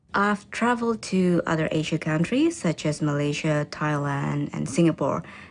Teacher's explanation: notice how the countries are listed using a level tone that then falls for the last item in the list